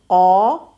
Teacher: ایک مسٹیک یہ آتی ہے کہ وہاں اپنے مخرج کو ٹچ کر کے ساؤنڈ واپس گلے میں جاتی ہے، اس سے بچنا ہے، گلے کی طرف نہیں جانے دینا۔ قاف زبان اٹھے گی، زبان کی جڑ اٹھ کے اس مخرج کے قریب جائے گی، قا کر کے پھر ساؤنڈ باہر آنی ہے، گلے کی طرف واپس نہیں جانے دینا